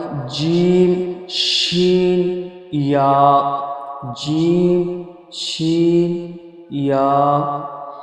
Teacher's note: 6 নম্বর মাখরাজ, 6 নম্বর মাখরাজে জিভের মাঝখান এবং তার বরাবর উপরের তালুর সাথে লাগিয়ে উচ্চারিত হয় জিম শিন ইয়া।